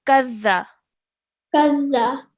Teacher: you wouldn't stretch the sound out of qa. You straight away join the kaf to the dal.